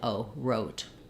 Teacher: O is a diphthong in English. I'm not saying O and but I'm gliding O. So as I say O, hold it longer, get a little bit more lax, and close your jaws.